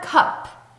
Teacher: 두 번째 단어의 cup의 P도 짧게 나는 유지되지 않는 소리고요. 목에 손을 대보면 성대가 울리지 않는 새는 소리예요.